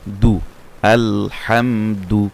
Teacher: সামনে উপরের দুই দাঁতের গোড়ার সঙ্গে লাগবে দাল দা আল হাম আর যেহেতু পেশ হয়েছে সেজন্য সেটা গোল হবে ঠোঁটটা গোল হবে